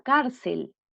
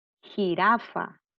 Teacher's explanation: lleva la sílaba tónica en la penúltima sílaba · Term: palabra grave